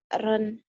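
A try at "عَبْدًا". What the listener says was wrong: Hak Abdan, bukan Abron, Abdan itu dal.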